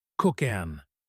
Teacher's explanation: The k sound at the end of cook moves to the front of an cook, then an egg.